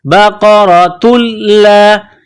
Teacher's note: انہا بقرۃ لا، قاف کو موٹا کرنا ہے، را کے اوپر زبر ہے تو را کو موٹا کرنا ہے. بقرۃ لا، یہ گول تا ہے، اس کے اوپر تنوین ہے، گول تا کو لام کے ساتھ پلس کرنا ہے، لام میں سختی کرنی ہے.